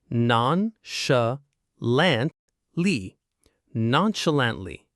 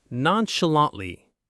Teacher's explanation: It's a long one. Non-sh-lant-ly. 4 syllables. The stress is on the third one, lant.